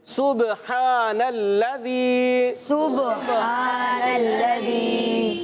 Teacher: لام کو باریک رکھنا ہے اور یہاں پر ذال کی ادائیگی کلیئر رکھنی ہے · با میں دیکھیں، با حرف جب آتا ہے اور ساکن ہو اور پھر کلکلا سے ہے تو کلکلا بھی کرنا ہے